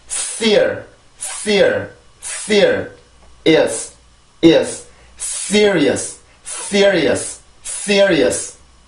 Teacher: S 발음을 할 때는 이렇게 강한 공기가 나옵니다. 치조 마찰음이죠. 자, 그래서 총같이 아주 강한 공기가 나와요. · S 발음은 치조 마찰음입니다. 치조에 혀를 갖다 대고 폐쇄가 아니죠. 폐쇄가 아니라 공기가 나오면서 공기가 마찰되면서 만들어지는 마찰음이란 말이에요.